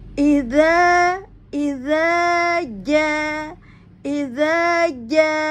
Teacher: Dza pada ujung lidah dengan gigi seri atas, ya. Beda makhraj dengan ya, tengah lidah dengan langit-langit.